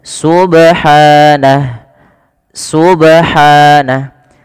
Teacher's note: Pada lafal ba di sini ada bacaan qalqalah yang dimana ba-nya ini perlu kita pantulkan ya teman-teman.